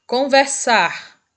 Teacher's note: Conversar, o sar é a sílaba mais forte, então é uma palavra oxítona também